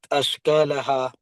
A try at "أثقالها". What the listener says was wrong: So that's letter tha. أثقالها. So it's like, you know, the th sound. Tha. Tha. أثقالها. Can you say tha? Tha. The one thing you would need to do is just make your tongue touch your two up front teeth. Tha.